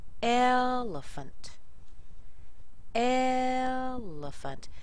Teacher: notice how the second e and the a in there are just little they're tiny these are weak syllables